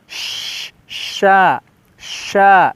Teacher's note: Min ahlil kitabi wal musyrikina, ini di sini dengan huruf shin besar ya. Kalau kita baca itu ada hembusan angin lebih deras, sya seperti itu. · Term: syin besar